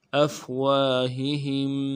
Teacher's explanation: ہا کو نرمی سے ادا کرنا ہے، دوسرے ہا کو میم ساکن کے ساتھ ملانا ہے، میم ساکن غنہ کریں گے۔